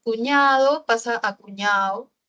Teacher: en El Costeño muchas veces la de casi no se pronuncia